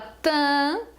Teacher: quando você fala ã é um som nasal é um som de uma vogal nasal